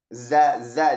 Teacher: Dia jahar berdasarkan aliran napas. Huruf zai ini jahar ya. Enggak ada napas.